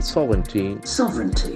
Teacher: The accent falls on the first syllable.